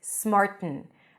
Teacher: perfectly fine you can pronounce it with a nasal stop smart a nasal T you block the air and you release Air through the nose smarten and some people might pronounce it with a glottal stop